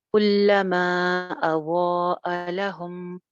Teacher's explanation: again हमजा की वजह से मद है, दोनों मदें दो दो अलिफ लंबी होंगी